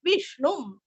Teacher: अनुस्वार का उच्चारण आधा म